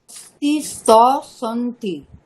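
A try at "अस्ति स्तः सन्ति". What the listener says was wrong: সহ, বিসর্গ দিয়ে বলতে হবে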